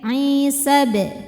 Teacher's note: madnya ini gugur, sinnya jadi pendek.